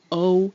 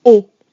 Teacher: but again not exactly the same that is it dip thong there's a little W sound at the end in English that does not happen in French